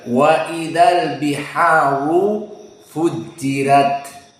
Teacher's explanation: Ada dua ra. Ra yang pertama al-biharu dalam keadaan mufakhamah dan fujirat dalam keadaan muraqqaqah.